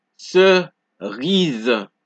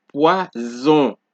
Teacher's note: So whenever an S appears between two vowels, right, in a word, you get a Z sound.